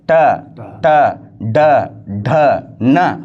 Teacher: ಈ ನಮ್ಮ ನಾಲಿಗೆ ಮೇಲ್ಭಾಗದೊಳಗೆ ಒಂದು ತಗ್ಗಾದ ಭಾಗ ಇದೆ ನೋಡಿ ಸರ್. ಅಲ್ಲಿ ನಾಲಿಗೆ ಒತ್ತಿ ಉಚ್ಚಾರಣೆ ಆಗ್ತಕ್ಕಂಥ ಅಕ್ಷರಗಳು ಸರ್. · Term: ಮೂರ್ಧನ್ಯ ಧ್ವನಿಗಳು